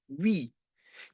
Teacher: We say we, because we're actually sliding w towards the E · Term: semi-vowels